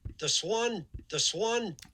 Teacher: i think that's just a regular old um alveolar n